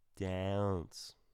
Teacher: when it's ah plus a nasal consonant which we talked about we add a small uh sound to it